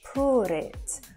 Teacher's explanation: it has more of an ooh sound but they also roll the r ever so slightly